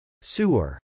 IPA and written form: sˈuɚ (sewer)